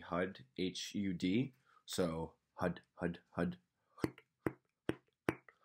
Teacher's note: the top side of your tongue this upper side is slapping the roof of your mouth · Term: sucker punch